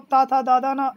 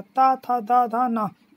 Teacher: आगे वाला जो जीभ का स्थान है वह हमारे दांत से छू रहा है